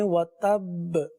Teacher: یہاں پر جماؤ بھی ہوگا اور قلقلہ بھی ادا کریں گے۔